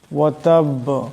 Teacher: এখানে বা মুশাদ্দাদ, দমসাল্লা বা সাকিন হয়ে যাবে, আওয়াজটিতে টক্কর খাবে। বা হলো কলকলার হরফ।